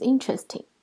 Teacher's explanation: there are only 3 syllables, interesting, and the stress is on in